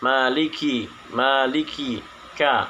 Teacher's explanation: sifatnya yaitu yang pertama nafas terhembus, kemudian suara tertahan atau syiddah. Yang ketiga lidah di bawah atau disebut dengan istifal.